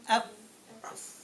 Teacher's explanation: The teeth are getting on top of the lip, lower lip, up, and that's it. No tongue is involved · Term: fa sound